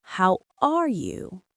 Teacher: Listen to the stress on are.